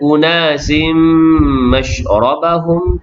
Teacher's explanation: tanwin bertemu dengan mim, idgham ma'al ghunnah, memasukkan tanwin ke dalam mim berserta dengung sekadar 2 harakat